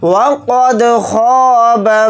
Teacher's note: और ख़ा को यहाँ पर मोटा यानी पुर पढ़ेंगे। बा को जल्दी पढ़ेंगे, मीम को नून साकिन के साथ मिलाकर पढ़ेंगे, नून साकिन के बाद दाल आ रहा है तो इसमें इख्फ़ा का कायदा हो रहा है।